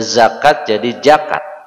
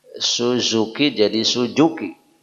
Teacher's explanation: orang-orang khususnya di Jawa Barat bukan tidak bisa membaca ja, tetapi dia memang menukar-nukarnya. Ditukar huruf jim dengan huruf zai.